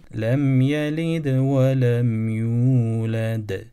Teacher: son del harfini daha net bir şekilde ifade etmiş oldum Çünkü orada durdum son duraktı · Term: Vakıf kalkalı